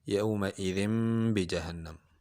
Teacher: با حروف اقلاب میں سے ہے تو تنوین کو میم سے بدل کر پڑھیں گے